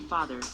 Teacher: The open back unrounded vowel, as in father